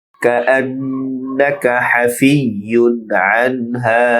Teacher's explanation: আন হামজা নুনের সাথে যুক্ত হয়ে নুনে গুন্না হবে, নাকা দ্রুত উচ্চারণ।